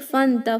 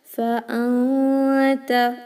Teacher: Fanta is wrong. Hamza must be clear. Don't merge it with the previous letter carrying fatha.